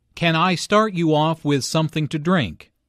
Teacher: with something to drink notice how the question starts with can since this is a yes no question the intonation rise at the end